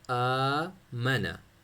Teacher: ہو رہی نہیں، حروف مدی سے شروع ہو رہا ہے، تو کھڑا زبر کو ایک الف کے برابر آپ نے کھینچنا ہے